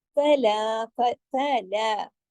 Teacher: فا ایک حرکت، لا 2 حرکات، کیونکہ لام کے ساتھ الف ہے لیکن دونوں باریک حروف ہیں